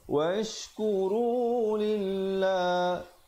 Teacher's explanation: lafzul jalalah dibacakan dengan nipis di situ